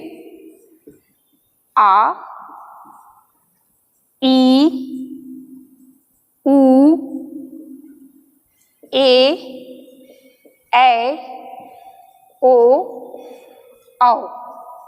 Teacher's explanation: इसमें 2 मात्रा का समय लगता है और ह्रस्व स्वर से अधिक समय लगता है। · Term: दीर्घ स्वर